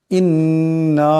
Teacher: ইন্না আনজালনাহু ফি লাইলাতিল কদর ইন্না এখানে নুনের উপর তসদিদ আছে নুন মুশাদ্দাদ কে এক আলিফ পরিমাণ গুন্না করিয়ে পড়তে হবে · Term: গুণনা